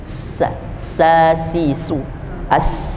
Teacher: juga pada huruf Sin Sin itu berhentinya ee di ujung lidah Sin itu ujung lidah alisan lidahnya tidak terangkat kalau terangkat nanti jadinya jadi ah lemaskan lidahnya ujung lidahnya menyentuh